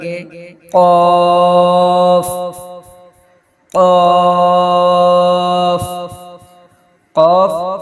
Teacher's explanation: ادا کرتے وقت زبان کی جڑ کا آخری حصہ جب تالو سے لگے تو قاف ادا ہوتا ہے